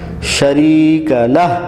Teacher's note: لہ میں آخر میں ہا نکالنا ہے اور وقف کر دینا ہے